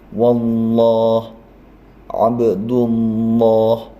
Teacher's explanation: Abdullah tapi ditekan, wallah abdullah ya. Terasa itu ujung lidah menempel pada pangkal atas gigi, cuma menempelnya itu banyak ujung lidahnya. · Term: tafkhim